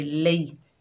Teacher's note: लाम के ऊपर ज़बर, आगे या साकिन है, ये या लीन है, नरमी और जल्दी से अदा करेंगे